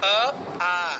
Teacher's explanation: জিহ্বার গোড়াটা উপরের তালুতে লাগছে একদম কন্ঠের দিকে কি কি বর্ণ স্বরবর্ণের অ আ একদম কন্ঠ থেকে সাউন্ড বের হচ্ছে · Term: কণ্ঠ বর্ণ